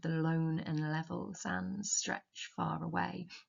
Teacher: the liquid alliteration of the lone and level sands stretch far away. That sibilance as well, creating the sense of just enduring nature, timeless nature.